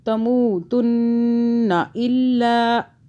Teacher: اس نون کو بھی نہیں کھینچنا. یہاں پہ آپ نے نون مشدد ہے تو آپ گنہ بھی کریں گے، 2 آوازیں بھی بنائیں گے. گنہ 2 سیکنڈ کا ہوگا